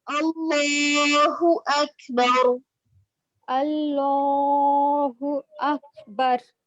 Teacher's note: अल्लाह ये वाला मोटा पढ़ेंगे लाम, लेकिन अकबर ये काफ बारीक है